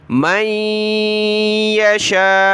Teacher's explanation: یہاں شین پر مد ہے، اس کو ہم نے کھینچنا ہے۔